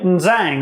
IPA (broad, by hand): nzæŋ